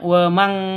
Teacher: samar, didengungkan, siap-siap ke huruf kafnya ditambah ng nun sukunnya, nun matinya. Cara bacanya wa mang, ya seperti itu ya, mati ke ang.